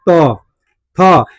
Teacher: जैसे हम त बोलते हैं तो मेरा जीभ जो है दांत में सटता है। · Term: दंत वर्ण